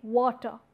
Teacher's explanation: here ra is not realized, that's why I'm omitting ra